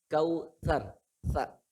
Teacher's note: Kautsar enggak kausyar, enggak. lidahnya digigit Pak. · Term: huruf yang digigit